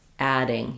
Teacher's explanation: So, if I was saying adding, you're going to hear adding. You're going to hear the duh happening because there's a vowel after it.